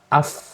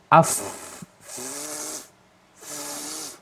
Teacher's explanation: ketika dia wakof atau sukun, maka nafasnya itu tetap ada alirannya gitu. Contoh fa ya, af, tuh ada af, ada udara yang mengalir, ada nafas yang mengalir. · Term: hamas